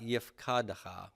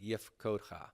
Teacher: Not yif kad ha, but yif kod ha. It's retaining that U-class vowel, which is characteristic of the cal imperfect for the theme vowel.